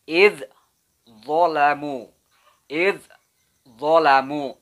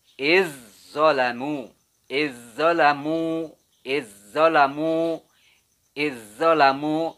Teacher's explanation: Jadi zal ini dimasukkan ke huruf dho, diidghamkan ya.